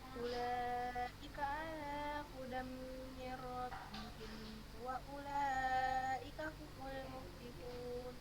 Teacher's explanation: Jadi mimnya itu nggak usah kita tekan, nggak usah kita idghamkan karena setelahnya bukan huruf mim yang berharokat, setelahnya huruf waw.